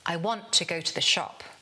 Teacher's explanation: They become schwas, and the sentence flows. The meaning words, the information words, want, go, and shop, these are strong and clear. Everything else gets reduced.